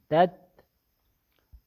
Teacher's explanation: تتبع، دیکھو تا میں صفت توسط ہے، اس میں آواز توسط نہیں، اس میں ہمس ہے اور شدت بھی ہے، تا میں صفت شدت بھی ہے اور ہمس بھی ہے، تو شدت کی وجہ سے آواز بند ہو جاتی ہے، تت، اور ہمس کی وجہ سے قدر سانس جاری ہوتا ہے لیکن سانس مسموع نہیں ہوتا، آواز مسموع ہوتی ہے اور سانس مسموع نہیں ہوتا۔